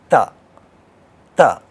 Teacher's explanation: we are going to see the tip of the tongue in the middle of 2 teeth, therefore it is called dental. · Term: dental sound